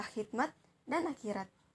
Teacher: Lalu bunyi X dilambangkan dengan lambang fonetis X. Bunyi ini termasuk dalam bunyi dorsovelar, geseran, dan termasuk dalam suara yang bersuara, seperti kata khidmat dan akhirat.